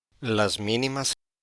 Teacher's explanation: Una vez más, ambas dianas están en posición diferente. En la declarativa de foco ancho, la diana L está al principio de la tónica